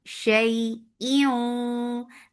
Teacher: This is idgham with gunna, so keep the sound in your nose for a longer time.